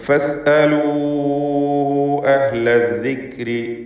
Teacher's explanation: ഫസ്അലൂ എന്നതിലെ വാവിനെയും മദ് മുൻഫസിൽ ജായിസ് നൽകി 4-5 ഹറക്കത്തിൻ്റെ അളവിൽ ദീർഘിപ്പിക്കേണ്ടതാണ്.